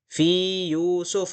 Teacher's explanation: ya bertemu ya, tidak boleh diidghamkan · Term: mad tamkin